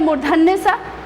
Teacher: उच्चारण के समय हमारा जो जीव है वो मूर्धा के पास चला जाता है, इसलिए उसको कहते हैं मूर्धन्य स।